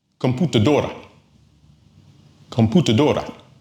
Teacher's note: it ends in a vowel, and the stress is on the second to the last syllable.